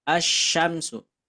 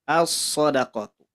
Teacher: Ketika alif lam bertemu dengan huruf syamsiah, maka alif lamnya diabaikan, tidak dibaca. Sekali lagi yang menjadi hukumnya lamnya ya. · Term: diidghamkan